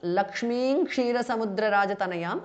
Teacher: అనుస్వార changes to ంగ which is a nasal of క వర్గ